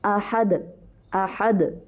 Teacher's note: ایک دفعہ پہلے آئے گی اور ایک دفعہ بند ہوگی، پھر دوبارہ سے باؤنس بیک ہوگی اور دوبارہ سے پروڈیوس ہوگی اپنے مخرج پر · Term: قلقلہ